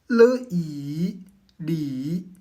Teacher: I ni basson à un son unique le le ou latéral. Ici la pointe de la langue bloque l'air au centre de la bouche mais l'air s'échappe librement sur les côtés de la langue.